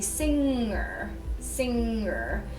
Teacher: if you say singer singer we usually carry over the NG over to the ER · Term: NG sound